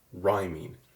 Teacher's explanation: the syllable rhyme in rhyming is more stressed than the syllable ing.